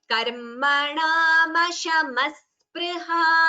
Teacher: Here it is karmanamashamaha spriha. So while chanting together, it would be visarga sakara sandhi. So there will be an extra sa instead of the visarga.